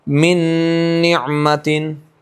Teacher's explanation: نون کا نون میں ادغام یہ مثلین ہوگا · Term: ادغام مثلین